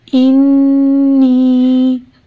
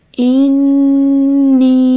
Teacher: میم مشدد اور نون مشدد حرف غنہ ہے، یہاں پہ ہم لوگ غنہ کرتے ہیں، آواز کو ناک میں ٹھہراتے ہیں۔